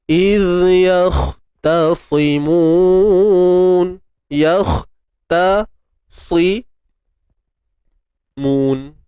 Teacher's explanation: Jadi pastikan pada ta ni kita kena kontrol sikit supaya tak terpengaruh dengan tebal huruf sebelum dan selepasnya. Kha dah tebal. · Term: ta nipis